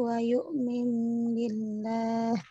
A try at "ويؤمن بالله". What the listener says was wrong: yuk mimnya, idghamnya ulangi idghamnya kurang lama.